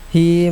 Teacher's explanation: Hi mad silah qasirah, dhamir berharakat kasrah berdiri tidak bertemu hamzah atau sukun panjang 2 harakat.